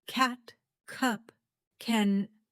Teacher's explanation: the back of your tongue touches the roof of your mouth, then releases.